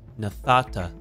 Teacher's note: the verbal root ends in a noon the noon will assimilate into the Tav